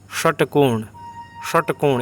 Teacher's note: इसका उच्चारण कुछ हद तक ख जैसा होता है इसका उच्चारण मूर्धा होता है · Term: मूर्धन्य स